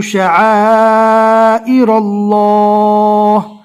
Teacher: اللہ کے لام کو اچھے سے پور پڑھنا ہے